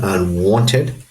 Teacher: for unwanted, the stressed syllable is the second syllable